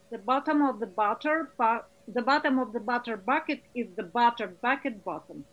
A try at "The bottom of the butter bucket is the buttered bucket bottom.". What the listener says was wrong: Good. Excellent.